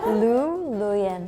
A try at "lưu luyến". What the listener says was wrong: No, yours like luyến. But it has to go up. Yeah, it's like luyến.